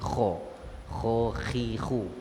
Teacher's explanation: Kha di mana? Kita punya hujung kerongkong. Di sini kha. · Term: huruf kha